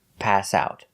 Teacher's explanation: we need to stress both the verb pass and the preposition out. Stress both words.